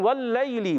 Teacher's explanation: वाव की अदायगी होंठों की गोलाई से होती है। वल्लैल लाम मुशद्दद है, जरा रुक कर अदा करें।